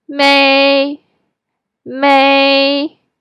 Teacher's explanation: It doesn't go up or down. You just go to the highest part of your voice range and hold it there for a second. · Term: first tone